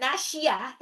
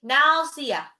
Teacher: shad itu bukan shin, bukan nasyiyah, tapi nasiyah, shad bukan shin, tapi jadi s aja ya, sin.